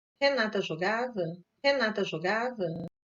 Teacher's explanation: rising-falling, with a peak on the final stressed syllable, the so-called circumflex contour. The difference with statements is the final contour, which has a rise to the final stressed syllable and a final fall.